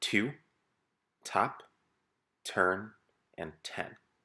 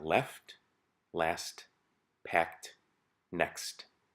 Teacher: in order to pronounce the T in all of these words, we have no choice but to make this full aspiration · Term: fully aspirated T